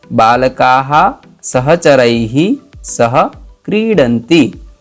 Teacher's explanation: जो आ है तो आ का विसर्ग का उच्चारण भी हा होगा